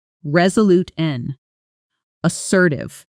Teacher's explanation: Notice too how the word and almost disappears in fast natural speech becoming just a quick n sound connecting the two adjectives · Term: natural reduction